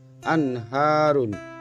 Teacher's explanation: anharun nun mati bertemu dengan salah satu huruf halq berupa ha maka cara membacanya bunyi n pada nun mati harus dibaca jelas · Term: izhar